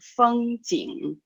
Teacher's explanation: There is a G sound, so it's really going back to the throat a little bit more.